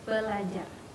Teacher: R yang pertama diperbedakan atau didisimilasikan menjadi L, sehingga menjadi belajar